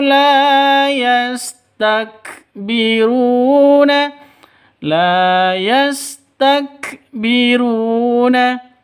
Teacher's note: La panjang dua ketukan karena ada alif diawali dengan fathah. Mad asli atau mad thi.